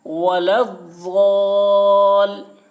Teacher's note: ولظ، ضاد الف لام زبر ضال، اوپر مد، ولضال، حرف مد الف ہے، حرف مد کے بعد والے حرف یعنی لام پر تشدید ہے، اس لیے مد لازم ہوا، مد لازم کو 3 یا 4 الف کے برابر کھینچ کر پڑھیں گے